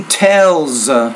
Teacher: pronounce it as a z because it comes after a voice consonant